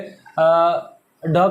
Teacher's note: ड का किससे होता तो आप कहेंगे मुर्धा से होता